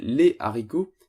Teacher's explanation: les gens disaient les haricots, sans la liaison entre le S et le A, parce que la dite liaison était coupée par le H de haricot.